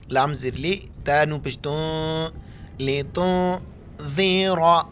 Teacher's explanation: लितुन्ज़िरा, नून के ऊपर मुड़ी हुई चीज़ है जज़्म है, यहाँ पर हम नाक में आवाज़ छुपा देंगे।